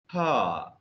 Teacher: And glottal fricatives, ha. The glottis is open.